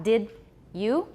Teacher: in the case of did you and don't you it's also in addition to palatalization it's also affrication